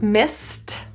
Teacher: If I'm using it in past tense, missed, the ED is pronounced as a T. So I have an S, a T for missed, and then I have a TH, another STTH combination.